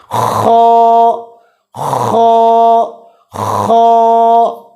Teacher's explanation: خا بھی گلے کے شروع والے حصے سے ادا ہوتا ہے